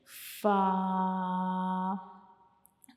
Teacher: ऊपर वाले ये जो सामने वाले 2 दांत हैं इनके जो किनारे होते हैं वो हमारा जो नीचे वाला होंठ होता है उसके अंदर वाले हिस्से को टच करते हैं। ठीक है, जब हम फ़ा को पढ़ते हैं तो हमारे ऊपर वाले सामने वाले जो 2 दांत होते हैं उनके जो किनारे होते हैं वो हमारा नीचे वाला जो होंठ होता है उसकी अंदर वाली साइड पे वो टच करेंगे, जैसे कि फ़ा। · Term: फ़ा का मखरज